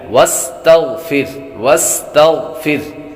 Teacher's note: سین حروف صفیرہ میں سے ہے سیٹی کی آواز آئے گی اور آگے غین حروف مستعلیہ میں سے ہے اس لیے اس کو پر پڑھیں گے